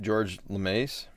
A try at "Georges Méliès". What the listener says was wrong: It's actually Georges. He has an S on the end. It's Georges. He's French. Georges Méliès.